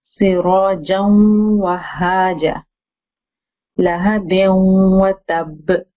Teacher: we do the merging of the noon sakin with these, any of these four letters, with the gunna sound. Okay? With the gunna sound means with nasalization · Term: idgham with ghunna